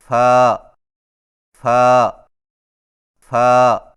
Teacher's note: فا کی ادائیگی میں ثنایا علیہ کے سروں کو نچلے ہونٹ کے گیلے حصے پر لگا کر باریک آواز میں پڑھیں